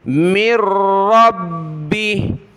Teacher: را اور با دونوں کو جمانا ہے سختی کے ساتھ، کیونکہ ان کے اوپر یہ تشدید ہے